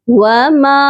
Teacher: میم کے ساتھ مد متصل ہے اس کو بھی ہم نے 3 سے 4 الف کے برابر لمبا کرنا ہے